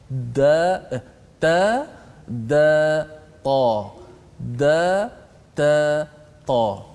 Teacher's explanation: hujung lidah ditekan ke gusi pengikat gigi ataupun permulaan gigi atas kita itu, berkongsi pada tempat yang sama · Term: makhraj